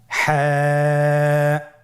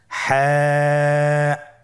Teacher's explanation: হা হরফটি উচ্চারিত হবে কণ্ঠনালীর মধ্যখান হতে। গলা চিপে ধরে আপনি উচ্চারণ করুন।